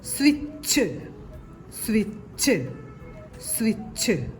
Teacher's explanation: സ്വി എന്ന അക്ഷരത്തില് സ യുടെ കൂടെ വ യുടെ ശബ്ദം ചേർന്ന് ഉച്ചരിക്കുന്നുണ്ട്